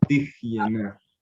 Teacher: aquí no suena una E, sino suena como una J exhalada